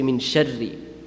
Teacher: Sharri is wrong because that's a full mouth. You're supposed to pronounce it empty mouth.